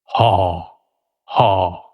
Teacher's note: আমরা যদি বিজ্ঞানসম্মতভাবে মুখের ভেতর থেকে বাইরের দিকে আসি তাহলে প্রথম বাধাটা হয় কন্ঠনালীতে। কন্ঠনালীতে একটু চেপে দিয়ে একটা বাধা তৈরি হয়। এখান থেকে একটা ধ্বনি উচ্চারিত হয়।